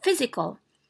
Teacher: So it is stressed in the first syllable.